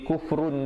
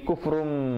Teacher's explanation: iqlab berarti menukar daripada bunyi nun kepada bunyi mim. Jadi jangan bunyi kufrun di situ, bunyi kufrum, tetapi dengan mim yang nipis, dua harakat.